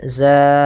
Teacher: fathatain bertemu dengan alif di akhir bacaan ketika kita wakaf panjangnya dua harakat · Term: Mad Iwat